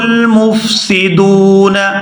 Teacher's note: یہاں دال کو واو ساکن کے ساتھ ملائیں گے تو کھینچ کر ادا کریں گے کیونکہ یہ واو مدہ ہے